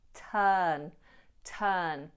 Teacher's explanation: And we make the long sound. No R, turn, turn. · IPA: /tɜːn/